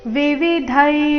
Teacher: ಧೈ ದೀರ್ಘ ಹೇಳಿ ನಂತರ ವಿಸರ್ಗ ಉಚ್ಚಾರಣೆ ತಗೊಳ್ಬೇಕು